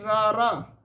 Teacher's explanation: ਕਾਂਬਵਾਂ ਵਿਅੰਜਨ ਰਾਰਾ ਪੰਜਾਬੀ ਦਾ ਕਾਂਬਵਾਂ ਵਿਅੰਜਨ ਇਸ ਦੇ ਉਚਾਰਨ ਸਮੇਂ ਜੀਭ ਵਿੱਚ ਕਾਂਬਾ ਜਿਹਾ ਉਪਜਦਾ ਹੈ ਤੇ ਜੀ ਵਾਰ ਵਾਰ ਉੱਪਰਲੇ ਬੁੱਟ ਨੂੰ ਚੋਂਂਦੀ ਹੈ।